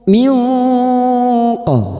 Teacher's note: bunyi nun sukun kita baca samar dan mendengung selama tiga harakat. Minqo pada saat menyamarkan dan mendengung kita siap-siap untuk membunyikan huruf qof dan mendengung selama tiga harakat.